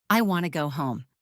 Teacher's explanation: want should have a clear T sound.